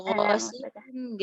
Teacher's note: Harusnya qaf ghasiqin qi karena dia masih ada sifat tebalnya tapi nisbiyah. Ya ada sedikit tebal ghasiqin gitu ya.